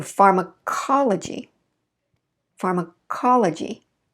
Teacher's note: i reduce that to a schwa right before the stress